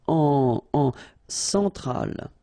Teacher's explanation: E-N nasal, so it goes in your nose